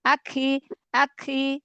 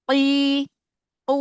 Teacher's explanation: kalau huruf qf dia enggak punya sifat hams